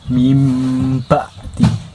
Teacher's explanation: Iklab itu hurufnya cuma ada satu, ba, dan ketika nun mati bertemu huruf ba tersebut, maka dibaca mim, kebacanya mim